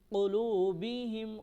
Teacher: قاف کو موٹا پڑھیں گے، ہم یہاں پر غنہ نہیں کریں گے.